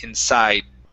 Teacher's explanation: really when I say this word, I do not pronounce the D 100%. It's about 50%.